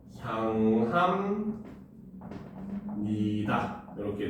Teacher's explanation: 향합니다라고 쓰지만 향합니다 이렇게 되고 여기서도 역시 비읍이 미음으로 변해서 소리나는 비음화가 일어난다는 거죠